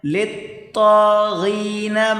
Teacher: لام اور طا آپس میں ملا کر سختی کے ساتھ پڑھیں